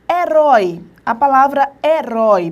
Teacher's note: o O aqui é a tua vogal e o I, o som mais brando, é a tua semivogal.